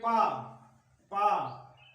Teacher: आपस में ओठ जो है ऊपर नीचे स्पर्श करते हैं। तो इस प्रकार से ये आपका ओष्ठ वर्ग हो जाएगा।